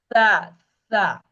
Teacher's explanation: সা হরফটা জিহ্বার আগা সামনের উপরে দুই দাঁতের আগার সাথে লাগবে। জিহ্বার আগাটা উপরের যে দাঁত আছে দুটো দাঁত ওইটার আগার সাথে একটু জিহ্বাটা বের হবে, জিহ্বাটা বের হবে এবং জিহ্বার আগাটা সামনের দাঁতের সাথে লাগবে।